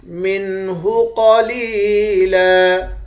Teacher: قاف کو موٹا پڑھیں گے، لام کو یا کے ساتھ ملا کر یا کو 1 الف کے مقدار کھینچ کر پڑھیں گے۔ آخر میں 2 زبر کی تنوین ہے، 2 زبر کی تنوین میں جب وقف کرتے ہیں تو 1 زبر بن جاتا ہے۔